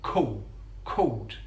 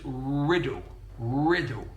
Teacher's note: he uses the vocalization of the dark l so with the word called called we're using a dark L